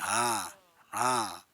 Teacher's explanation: है ऊष्मा सी रहती है इसीलिए इनको उष्म व्यंजन कहते हैं इनको बोलने में रगड़ खाता है हवा मुह में